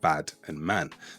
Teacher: You'll hear it with words like bad and man. That a is slightly stretched. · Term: unique a sound